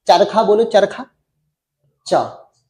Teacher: जैसे आप चौ बोलोगे, चौ बोलोगे तो चौ बोलते हुए जीभ ऊपर तालु पर लगती है। चरखा बोलो, चरखा, चा, जीभ तालु पे लग रही।